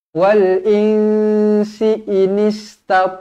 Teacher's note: Nun kosong bertemu dengan Sin ikhfa Hakiki dengung dua harakat